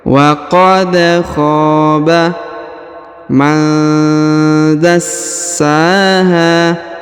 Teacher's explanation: Huruf nun sukun bertemu da, maka didengungkan dan disamarkan ya.